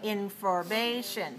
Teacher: So information is stressed on the 3rd syllable.